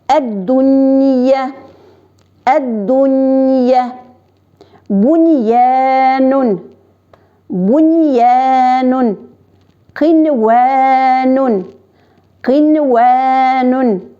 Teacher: бер нәрсәне үзгәртмичә, н хәрефен ачык итеп укыйбыз.